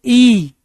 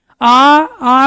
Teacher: इ के उच्चारण में आप मेरे दांत तो देख पाओगे लेकिन मेरा मुख का जो द्वार है दरवाजा है फाटक है वह पूरा नहीं खुलेगा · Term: संवर्त